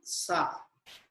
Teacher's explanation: line three line and fourth line This is sha then sa sa is a dental sound tongue touching the teeth